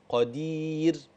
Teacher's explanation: الراء في كلمه قدير لما اجي اقف ترقق